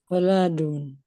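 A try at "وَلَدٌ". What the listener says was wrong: wanya tidak panjang. Waladun.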